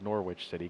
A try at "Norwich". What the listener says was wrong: It's Norwich. Yeah, Norwich. Yeah, there's no W.